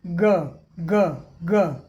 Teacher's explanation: कोई हवा का झटका नहीं